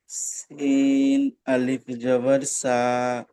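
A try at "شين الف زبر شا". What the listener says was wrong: তিন নয়, এটা হলো শিন। শিন আলিফ জাবার শা। সা নয়, সা নয়, শা শা। আপনার উচ্চারণটা হচ্ছে না, হচ্ছে না, সিন হয়ে যাচ্ছে। সিন তো যেটার উপরে নোক্তা নেই ওটা সিন, আর এর এর উপরে নোক্তা রয়েছে, এটা হবে শিন। শিন উচ্চারণ করেন, হচ্ছিল শিন। শিন হচ্ছে না, শিন।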